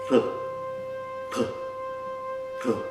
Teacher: Parece tá, né? Parece com o nosso T, mas tem um som um pouco diferente e é pronunciado colocando a ponta da língua para trás. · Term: retroflexas